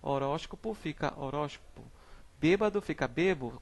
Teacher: Nós temos aqui também a letra C, síncope, que é o nome dado à supressão de fonemas no meio do vocábulo